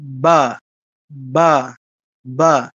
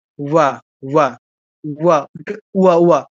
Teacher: অন্তঃস্থ বর ক্ষেত্রে ঠোঁটটা লাগবে না।